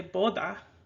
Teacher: you see how the d does sort of sound like a th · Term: th sound